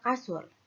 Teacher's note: near close pada posisi lidah belakang terdapat bunyi U